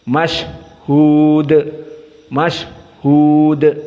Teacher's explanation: di saat disukunkan nafas masih keluar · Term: sifat alhams